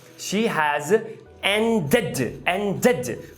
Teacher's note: Eu falei o id. She has ended, porque end termina com o D.